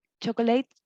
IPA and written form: tʃɒklət (chocolate)